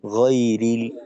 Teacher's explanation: জবর উচ্চারণ যেন কোনো ক্ষেত্রে গোল হয়ে গোয়া হয়ে না যায় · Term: ঠোঁট খোলা রেখে